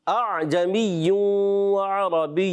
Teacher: ایک حمزہ سے پڑھا، ایک حمزہ بالکل ہی ختم کر دیا، اعجمی وعربی، یہ بھی غلط ہو گیا، ٹھیک ہے۔